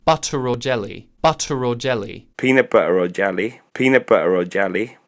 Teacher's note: Linking R. So even in non-rhotic dialects, a lot of times you'll see this R return if the next word begins with a vowel